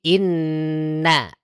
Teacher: Ketika ditahan, maka na-nya tipis. Jangan sampai dia terbawa tebal.